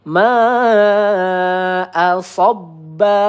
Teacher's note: Nah mad wajib muttasil dua ayunan atau empat harakat ya.